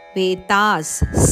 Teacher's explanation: ಆ ನಂತರ ಬರುವ ವಿಸರ್ಗದ ಉಚ್ಚಾರಣೆ ವೇತಾಸ್, ಸ ಅಂತ ಬರಬೇಕು ಶಬ್ದ, ಅದು ಬ್ರ್ಯಾಕೆಟಲ್ಲಿ ಕೊಟ್ಟಿದ್ದಾರೆ.